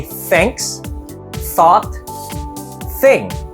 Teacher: we have to pronounce with an unvoiced th like when we say thanks thought thing